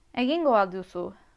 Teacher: I want you to note the lack of rising intonation at the end. This is contrary to many English questions.